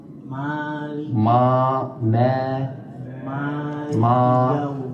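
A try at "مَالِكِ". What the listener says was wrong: perhatikan di itamul harakahnya pengucapan harakat fathahnya yang benarna buka mulutnya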